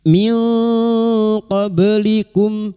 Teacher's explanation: Iqfa hakiki nun sukun dibaca samar dan mendengung selama tiga harakat. · huruf ba yang mati asli di tengah kalimat qalqalah sugra, jangan lupa dipantulkan